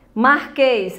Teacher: acento circunflexo, som fechado aí no E